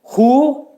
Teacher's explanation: Hə hərfinin məxrəci də boğazın aşağısından çıxarılacaq.